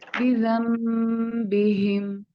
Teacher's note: अगर नून के ऊपर मीम है तो इसका मतलब है कि अब आप नून स्किप करेंगे और मीम बोलेंगे, तो यूं ये हो जाएगा बी बिहिम, और इसको भी हम लंबा खींचते हैं। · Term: इक़लाब